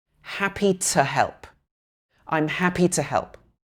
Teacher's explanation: So in happy to help, the to changes to t.